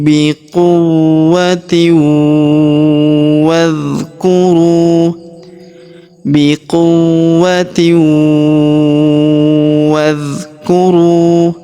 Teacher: Alifnya tidak dibaca karena ini adalah hamzah wasal. Hamzah penyambung antara kata sebelumnya dan kata setelahnya.